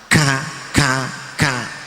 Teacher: Kaf ini nanti ada hamesnya artinya banyak keluar nafasnya